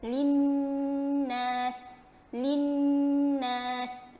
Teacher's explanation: maksudnya kita bagikan dengung dengan sempurna dengan kadar 2 harakat